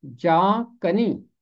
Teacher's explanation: इसका तलफ़ुज़ है जा कनी। जान कनी बेशक लिखा है, मगर उर्दू में हम इसे जा कनी पढ़ते हैं नून गुन्ना के साथ।